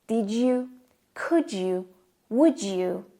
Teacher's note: when D and Y are connected, they form a J sound.